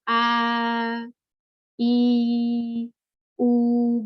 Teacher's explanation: Maksudnya adalah tidak ada yang ketemu ketika kita mau mengucapkan a, i, u, nggak ada yang ketemu. Benar-benar suara aja yang keluar. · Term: mad